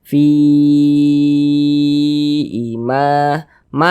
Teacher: mad jaiz munfasil. Panjangnya itu 4 hingga 5 harokat. Boleh 4 harokat, boleh 5 harokat. · Sebelumnya ada harokat kasroh, maka huruf yang memiliki harokat kasroh ini dibaca panjang